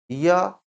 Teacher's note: य का उच्चारण होता है तालु से, लेकिन जीभ पूरी तरह से तालु का स्पर्श नहीं करता है, हल्का सा स्पर्श करता है। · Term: अंतस्थ व्यंजन